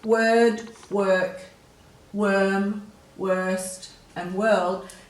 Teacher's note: there's no air after the W, so there's no H. So that's the easiest way to work out if there's an H after the W, is to just feel if there's air there.